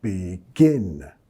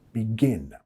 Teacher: Y nota la acentuación begin. Estamos acentuando la segunda sílaba. También no es begin, más un sonido e, que no existe en español.